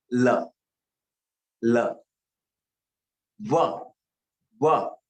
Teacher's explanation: देखिए दांत को जीभ छुई तब ल निकला।